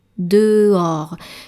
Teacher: So basically, the challenge here with dehors is that there's an H in the middle of the word. The final S is silent, of course, but when you listen to it, there's de and or, dehors.